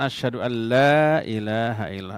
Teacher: memasukkan bunyi huruf nun yang mati ke dalam huruf lam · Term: idgham